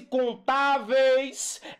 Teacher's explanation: O e é mais forte que o i. Primeiro vem o mais forte, aí vai decaindo para o mais fraco. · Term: ditongo decrescente